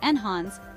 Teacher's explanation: something making it better or more desirable the pronunciation is enhance with the stress on the second syllable